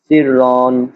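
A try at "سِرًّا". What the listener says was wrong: সিররন, সিররন এ তো টান হবে না, সিররন। তানবিনের উচ্চারণও তাড়াতাড়ি করতে হবে।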